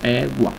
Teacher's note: Acá es sin acento, entonces un tono medio.